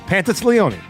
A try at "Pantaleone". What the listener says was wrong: You're giving me an S. You're giving me an S there, too.